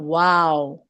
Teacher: وہ جو انگلش والا واو ہوتا ہے نا جس میں ہونٹ کھول کے ہم بولتے ہیں ارے واو, یہ وہ والا واو ہے. ٹھیک ہے, تو ہونٹ پورے گول ہوں, آپس میں ٹچ نہیں ہونے چاہیے, تب ہمارا لفظ ادا ہوتا ہے واو